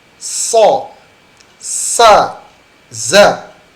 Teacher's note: sofir adalah suara tambahan yang keluar dengan kuat di antara ujung lidah dan gigi seri. Artinya huruf ini terdengar tajam.